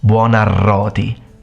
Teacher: Double R, you gotta show off your rolling of R, mate.